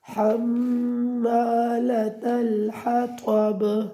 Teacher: یہ میم مشدد ہے اور یہاں پہ آپ نے غنہ ہمیشہ کرنا ہے، اس کے آگے کوئی قانون نہیں چلتا، بس اس کا یہی قاعدہ ہے کہ آپ نے ہمیشہ نون مشدد اور میم مشدد میں غنہ کرنا ہے۔